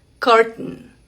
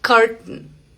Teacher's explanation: es cuando la T se detiene aquí en la garganta. Por ejemplo, en la palabra cortina, que es curtain. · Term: glottal T sound